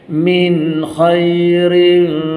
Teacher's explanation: Min ada tanda mati jumpa kha irzhar halqi, tak dengung.